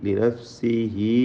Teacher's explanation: മദ്ദുസ്സില സുഗ്റ നൽകി ലിനഫ്സിഹി വ ഇല ലിനഫ്സിഹി എന്ന് ഒരു യാ നൽകാവുന്നതാണ്. 2 ഹറക്കത്തിൻ്റെ അളവിൽ മാത്രം ദീർഘം നൽകുക. വഖഫ് ചെയ്യുമ്പോൾ സുക്കൂൻ നൽകി ലിനഫ്സിഹ് എന്നും.